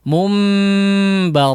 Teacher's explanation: Hukum iqlab berlaku ya. Nun sukun atau tanwin bertemu dengan huruf ba ya, sehingga digunnahkan ya.